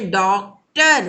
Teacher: हम ओठ को गोल करके बोलेंगे